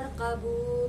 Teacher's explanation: Terus pada lafadz bu itu juga bacaan matobi'i sebab domah bertemu dengan wawu sukun yang panjangnya satu alif atau dua harokat. Terus pada lafadz fi itu juga bacaan matobi'i sebab kasrah bertemu dengan ya sukun yang panjangnya satu alif atau dua harokat.